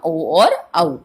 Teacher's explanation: कंठ और ओष्ठ से बोले जाते हैं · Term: कंठोष्टम